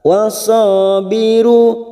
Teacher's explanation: sa fathah diikuti alif 2 harokat